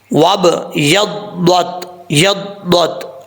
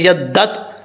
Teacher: ضاد کا مخرج ہے زبان کی جو لیفٹ سائڈ ہے، یہ جو سائڈیں ہیں زبان کی، یہ اوپر والی داڑھوں سے لگیں گی تو ضاد پڑھا جائے گا، اور جب تک زبان جو ہے وہ اوپر کی طرف نہیں اٹھے گی اس وقت تک یہ ضاد فل موت نہیں پڑھا جا سکتا۔